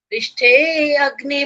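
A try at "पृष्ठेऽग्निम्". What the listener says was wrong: नहीं नहीं, नहीं बोलना, पृष्ठेग्नि ऐसे बोलना है। तो जो भी जहां पर संधि वाले जो शब्द हैं संधि सहित बोल रहे हैं वहां पर अपने अलग अलग नहीं कर सकते।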